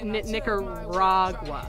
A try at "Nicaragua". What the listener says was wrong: Yeah, don't space that out. Yeah, say it all at once.